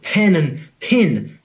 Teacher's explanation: they both sound like pin to me